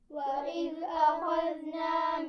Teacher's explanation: ان دونوں الفاظ میں ذال ہے، نرمی سے پڑھا جائے گا بغیر سیٹی کے